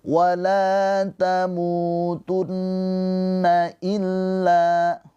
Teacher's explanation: Cara bacanya nun yang bertasydid ini ditahan dua harakat. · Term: ghunah musyaddadah